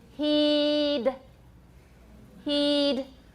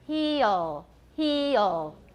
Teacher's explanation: e is pure with the d at the end not so pure with the l at the end